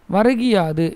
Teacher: முதல் சொல்லின் இறுதியில் உள்ள கூ என்னும் எழுத்து கி என்று ஒளிக்கிறது. அதுவும் முழுமையாக ஒளிக்காம குறைந்து ஒளிக்குது. தன்னுடைய ஒரு மாத்திரை அளவில் குறுகி ஒளிக்கும் இகரம் குற்றிய லிகரம் எனப்படும்.